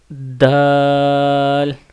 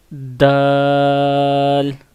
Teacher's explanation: اوپر کے دانتوں کی جڑ کے ساتھ لگتا ہے تو دال ادا ہوتا ہے